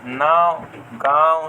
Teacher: मुह से ज्यादा निकले ला और नाक से कम निकले ला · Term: अनुनासिक